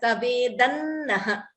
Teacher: Anuswara followed by Na. We optionally combine the Sandhi as Tavedan Naha.